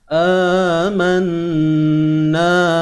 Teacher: Hamzah 2 harakat. Kena baca 2 harakat confirm, cuma namanya mat badal. · Nun bersabdu kena dengung 2 harakat.